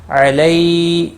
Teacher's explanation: با کو کھینچنا نہیں. علی یا لین ہے، تھوڑا نرمی کے ساتھ کھینچ کر ادا کریں گے